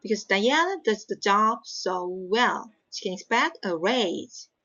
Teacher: so the primary stress is well and then raise